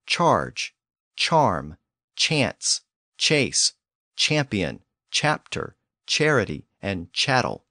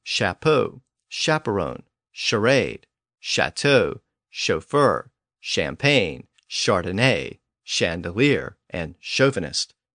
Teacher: French words that came in during or after the 1400s tend to have that newer sh sound